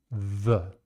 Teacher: The tip of the tongue going to the cutting edge of the upper teeth. This is another fricative sound.